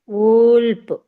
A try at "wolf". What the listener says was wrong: ఊల్ప్ కాదక్క, ఓ యక్క, నువ్వు పక్కన చదువుతుండవేమో, అది చదవకూడదు. ఊల్ఫ్ అనాల. ఊల్ఫ్. ఊల్ఫ్.